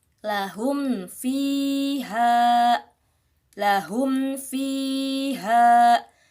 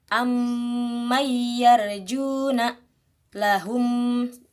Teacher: Maka disebut idhar syafawi. Idhar jelas. Tidak didengungkan seperti ikhfa syafawi dan seperti mim idgham mimi.